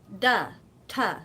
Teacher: your tongue is only touching the roof of your mouth, your hard palate, not your teeth.